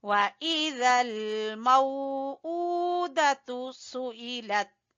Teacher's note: ऊ को उल्टे पेश की वजह से खींचेंगे